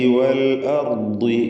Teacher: വൽ അർദി റായിനും ദ്വാദിനും മാത്രമാണ് തഫ്ഖീം. ദ്വാദിന് കുറഞ്ഞ തഫ്ഖീമാണ്, കസ്ര ആയതുകൊണ്ട്.